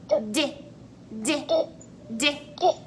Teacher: Do you feel your throat buzz? Yeah, that's because for this sound we use our voice.